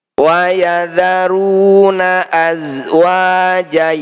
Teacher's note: Harokat fathah tanwin jika dibaca wakaf maka harus dibaca fathah panjang. Panjangnya 2 harokat saja. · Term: mad iwab